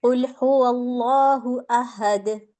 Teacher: ان 2 پیش کو میں دال پر ساکن لا رہی ہوں اور اس کے ساتھ میں کلکلا کرتی ہوں